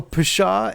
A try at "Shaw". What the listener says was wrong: I think it's Shaw. The P is silent.